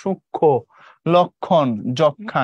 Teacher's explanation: যুক্ত ব্যঞ্জন বর্ণের শেষ বর্ণটিকে প্রমিত উচ্চারণের সামান্য সানুনাসিক করে তোলে, মানে কিছুটা নাকের প্রভাব দিয়ে পড়তে হয়, যেমন সূক্ষ্ম, লক্ষণ, যক্ষা ইত্যাদি।